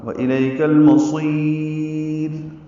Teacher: را پہ وقف ہوگا را باریک ہوگی اور اس میں جو صفت تقریر ہے وہ ظاہر ہوگی. قلقلہ نہیں ہونا چاہیے.